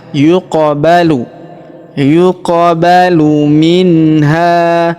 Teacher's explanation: huruf qof berharakat sukun maka kita pantulkan atau kita qalqalahkan ya